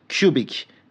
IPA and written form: kju: bɪk (Cubic)